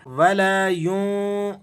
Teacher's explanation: نون پر آپ نے اخفا ادا کرنا ہے اور زا کو آپ نے ذرا سختی کے ساتھ ادا کرنا ہے